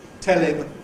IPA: ˈtel ɪm